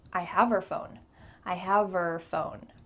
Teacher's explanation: The H is gone.